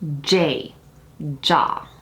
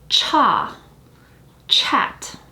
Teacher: the english j is completely unaspirated whereas the ch is very aspirated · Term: aspiration